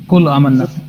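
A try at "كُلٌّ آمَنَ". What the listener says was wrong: कुल्लुन कुल्लुन लाम दो पेश लुन है यहाँ पे कुल्लुन पढ़े आप कुल्लू नहीं पढ़े हाँ तो इससे तो लफ्ज़ का मतलब चेंज होता है ना एक है कुल्लू एक लफ्ज़ है कुल्लुन दोनों एक अलग लफ्ज़ हैं उसमें एक पेश इसमें किरात का मसला नहीं है लहजे का मसला नहीं है इसमें आप एक पेश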